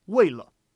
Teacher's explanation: that's an example where 为 for sure will be fourth tone